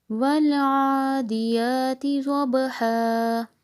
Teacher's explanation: ضاد کو موٹا، با پہ قلقلہ اور ہا حلق سے